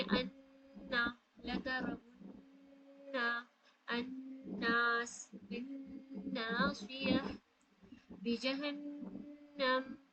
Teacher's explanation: Front part of the tongue से नून अदा होती है तो front part of the tongue भी यूज होगी, प्लस ये आपकी नोजल पार्ट भी यूज होगी।